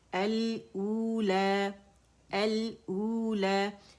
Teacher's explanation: अल ऊला, ऊला के अल अगेन हमारे पास लाम कमरिया है, और कमरी हर्फ से आगे आ रहा है तो लाम तारीफ़ को इसने ज़ाहिर कर दिया